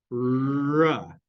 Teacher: ra, your tongue is pointing towards your alveolar ridge.